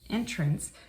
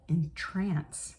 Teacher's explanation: Entrance can be a doorway, and with a stress on the second syllable can mean to charm or delight